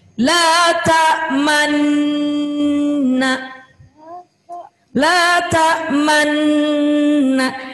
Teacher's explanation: yang disebut dengan ismam itu memonyongkan huruf nun menjadi dhammah.